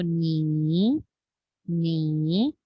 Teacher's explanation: तो हम नी को जब पढ़ते हैं तो हम पहले अपनी आवाज नीची करनी है, फिर हमें अपनी आवाज ऊंची करनी है। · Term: थर्ड टोन